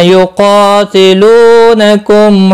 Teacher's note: قا الف مدہ ہے، لو واو مدہ ہے، دونوں کو ایک ایک الف کے برابر کھینچ کر پڑھیں گے